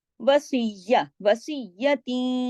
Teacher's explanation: तीन की, पहले तो हमने सख्ती से जोड़ा वसीया, और फिर ता दो जेर तीन की जो थी ना तनवीन, उसके बाद या आ गया, इदगाम हो गया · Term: इदगाम नाकिस